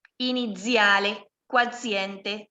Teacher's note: Ustedes siempre que tengan doble Z o Z sola es como una TS.